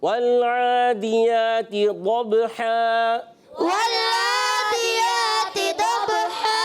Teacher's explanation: यहाँ लाम को हिलाना नहीं, आइन की आवाज़ को दुरुस्त रखेंगे, हलक के दरमियान वाले हिस्से से अदा करेंगे